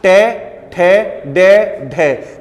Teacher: जब टे, ठे, डे का उच्चारण करते हो तो जीभ की जो अगली नोक होती है ये ऊपर को थोड़ी मुड़ी हुई होती है। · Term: मूर्धा